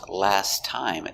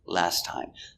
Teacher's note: when you link the sounds, last time, there's only one T sound for time. Not for last. No T there.